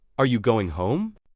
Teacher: We typically use a rising intonation for yes no questions. The pitch goes up at the end.